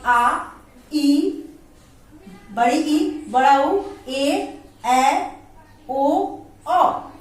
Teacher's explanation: ये दीर्घ स्वर के अंतर्गत आता है और इसमें 2 मात्रा के समय लगते हैं।